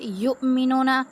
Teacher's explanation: युमिनूना हमज़ा साकना पे हमेशा झटका दे के पढ़ा जाता है।